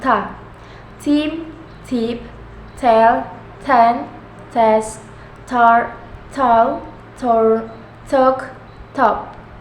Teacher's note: Voiceless alveolar stop sound